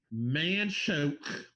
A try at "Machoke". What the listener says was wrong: Machoke, you mean? You definitely said man choke. Machoke.